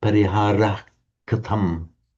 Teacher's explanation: when it's immediately followed by another word, you don't have the shadow vowels